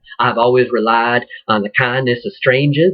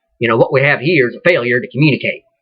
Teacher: You drop in your R's, and then you hit your R's.